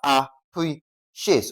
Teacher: for appreciate, the stress is on what now? Pre.